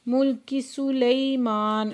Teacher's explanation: لئی پہ یا لین ہے، دو حرکت کھینچ کے پڑھیں گے